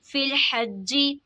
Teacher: जीम मुशद्दद है तो इसमें कलकला खूब ज़ाहिर होगा